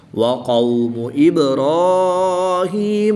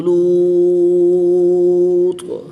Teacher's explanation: واو ساکن سے پہلے زبر ہے تو واولین اس کو لمبا نہیں کریں گے، واو ساکن سے پہلے پیش ہے تو واو مدہ، اس کو ایک الف یعنی 2 حرکات کے برابر کھینچ کر پڑھیں گے